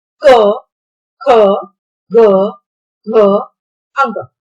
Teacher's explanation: While speaking these letters, if you put your hand on your throat, you'll find your throat vibrating. That is why Kavar is also called Kanthavya because you are speaking it from your throat.